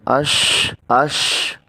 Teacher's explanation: شین میں سیٹی کی آواز آئے گی